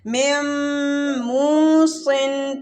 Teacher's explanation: پہلے میم کو میم کے ساتھ ملاتے ہوئے غنہ کریں گے · ادھر نون ساکن کے بعد میم آ رہا ہے تو ادھر ادغام ہو رہا ہے